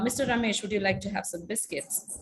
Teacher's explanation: the one that i spoke to mr ramesh was more adult like and it was more a stable pitch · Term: intonation pattern